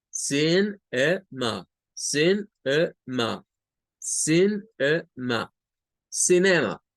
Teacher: O sea, la C, la I y la N, estas tres forman una primer sílaba, que es como sin. Luego, la schwa, que es esa E, es una sílaba aparte, que es A. Y al final, la M y la A es otra sílaba, como ma.